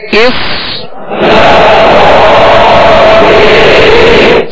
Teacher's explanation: حمزہ صاد زیر اس. صاد میں سیٹی کی آواز پیدا ہوگی اور صاد کو پر پڑھیں گے اور صاد ساکن ہے، سکون ہلنے نہ پائے.